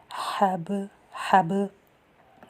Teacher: حا حلق سے ادا کیا جائے گا، با پہ قلقلہ اور لام کو نارمل پڑھا جائے گا۔